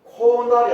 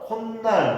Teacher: 그러니까 이 두 가지가 합쳐지면서 그 사이에 어떤 없었던 소리, 새로운 소리가 중간에 끼어드는데 그 사이소리의 발음이 뭘로 난다? 니은으로 소리가 난다.